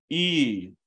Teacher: then put you know ooh lips around it e e right so you're saying e inside your mouth but you have ooh lips and that's the same same for all of these right so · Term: rounded e